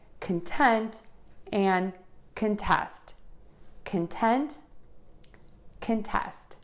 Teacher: However, when that syllable is unstressed, we're going to use the short sound and say kun